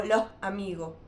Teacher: la primera S es aspirada y la segunda se elimina